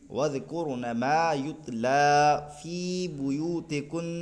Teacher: कुन पे हम रुक रहे हैं, तशदीद को तो बाकी रख रहे हैं लेकिन हरकत को ज़ाहिर नहीं होने दे रहे हैं